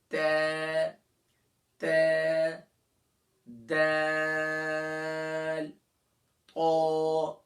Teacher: Tip of द tongue and द roots of upper front teeth, यानी कि जबान की नोक और थनाया उलिया, ऊपर के सामने के जो दो बड़े दांत है इसकी जड़ पर लगाएंगे। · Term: मखरज